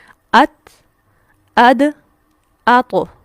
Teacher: जुबान की नोक सनाया उलिया की जड़ से लगे सामने वाले ऊपर के दो दांत उनकी जड़ से लगे यहां